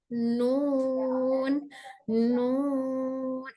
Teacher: नून बोलकर महसूस करें कि आवाज सिर्फ मुंह से नहीं बल्कि नाक से भी आ रही है। बस नून के लिए सिर्फ जबान का रोल या दांतों का रोल नहीं है, बल्कि नाक भी उसको टच कर रही है, मतलब नाक भी उसमें शामिल हो रही है, नाक से भी आवाज निकल रही है। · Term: गुन्ना